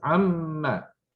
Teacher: Now remember we said once we merge the ma with any other particle, it loses its aleph. So there's no 2 beats there, there's only 1 beat. Single fatha. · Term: short vowel